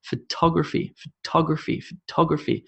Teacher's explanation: you can hear that I'm emphasizing the top top top